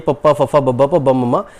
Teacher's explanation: ਹੋਂਠ ਦਾ ਮਤਲਬ ਬੁੱਲ ਸਮਝੀ ਗਏ, ਭਾਵ ਦੋਵੇਂ ਬੁੱਲਾਂ ਦੀ ਮਦਦ ਦੇ ਨਾਲ ਜਾਂ ਫਿਰ ਦੋਵੇਂ ਬੁੱਲਾਂ ਦੇ ਜੁੜਨ ਦੇ ਨਾਲ ਪੈਦਾ ਹੋਈਆਂ ਧੁਨੀਆਂ ਨੂੰ ਆਪਾਂ ਹੋਂਠੀ ਕਹਿੰਦੇ ਆ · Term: ਹੋਂਠੀ ਧੁਨੀਆਂ